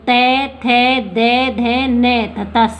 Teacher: अपन बोलकर भी देख सकते हैं कि अपनी जिह्वा है वो दांतों के स्पर्श कर रही है।